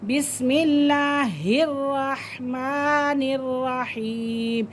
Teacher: मीम के ऊपर खड़ा ज़बर है, खड़ी ज़बर को एक अलिफ की मिक़दार हम खींच के पढ़ेंगे। रहमानिर्रहीम, या साकिन से पहले ज़ेर है तो ये या मद्दा है, तो इसे हम थोड़ा सा लॉन्ग कर सकते हैं।